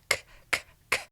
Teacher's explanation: As you notice, your voice box is not vibrating on that k sound